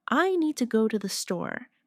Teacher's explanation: Make need and store strong. And let to the be quick and light. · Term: rhythm